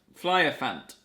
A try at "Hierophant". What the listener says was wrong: Flyerfant, it's an H. Hierophant, I think is how you pronounce it.